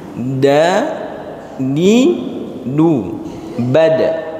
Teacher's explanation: Huruf dal keluar dari ujung lidah bertemu pangkal tumbuh gigi seri atas.